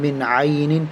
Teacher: نون ساکن کے بعد عین آ گیا, اس لیے غنہ نہیں کریں گے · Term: اظہار